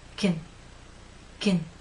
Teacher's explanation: still flat and pushed forward K in the second alternative pronunciation your lips are completely relaxed and your tongue is no longer flat and pushed forward the middle part is actually pushed up a bit